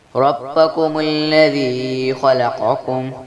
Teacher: ربکم الذی خلقکم، را پر زبر ہے جس لیے اس کو موٹا پڑھیں گے، خا حروف مستعلیہ ہے جس لیے خا کو بھی موٹا پڑھیں گے، اور قاف بھی حروف مستعلیہ ہے جس لیے قاف کو بھی موٹا پڑھیں گے